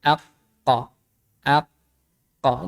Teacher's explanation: pangkal lidah ini nempelnya di tulang lunak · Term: huruf qaf